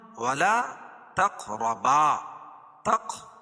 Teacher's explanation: تق قاف پر قلقلہ اور قاف کو پور پڑھیں گے